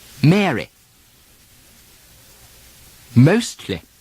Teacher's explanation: Americans usually keep the full E sound, Mary, while the English soften it almost to an I sound